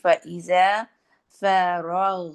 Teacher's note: یہاں پہ غین میں رخاوت بھی ہے، آواز بھی ہے. تو آواز میں مخرج ایک دم سے نہیں ختم، فرغتا نہیں کرنا، یعنی کہ ایسے نہیں کہ غین کی پوری صفات ہی زیادہ نہیں ہے.